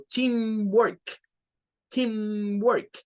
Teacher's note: Notando que lo de team es la sílaba tónica, la que se hará con un poco de más fuerza.